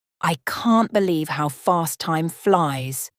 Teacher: some words, can't, fast, and flies are stronger, while others like how and time are softer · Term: emphasizing the most important words